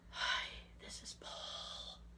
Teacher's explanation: It was very breathy and very creepy.